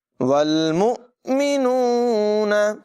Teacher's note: حمزہ ساکنہ میں ہمیشہ جھٹکا دے کر پڑھتے ہیں، یہاں بھی جھٹکا ہوگا۔